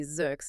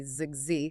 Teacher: You automatically add an S to zuk and a Z to zug